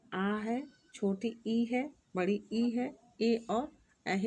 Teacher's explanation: वे स्वर जिनका उच्चारण करते समय ओष्ठ गोल नहीं होते अपितु फैल जाते हैं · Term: अवृत्तमुखी या प्रसूत स्वर